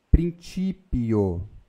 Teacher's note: Sempre quando o C estiver junto com a letra I, ou a letra E, ou som de E, você vai falar o C como T e não como som de K. K só se for com A ou U.